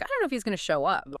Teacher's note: I don't know. It becomes that quick dunno, and if he is going to, contracts naturally to if he's gonna. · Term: contractions